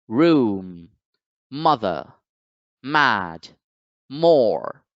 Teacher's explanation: m in the ipa symbol and it represents the sound now the m sound is produced by closing the mouth completely and then passing the voiced air through your nose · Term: nasal consonant